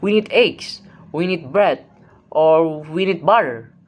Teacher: rising tones also appear in non-final list items